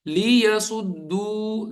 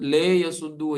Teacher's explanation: لی پڑھنا ہے, لے نہیں پڑھنا. ليصدوا, لے یسدو, یا لے کو لمبا کرنا یا لی کو لمبا کرنا غلط ہوگا.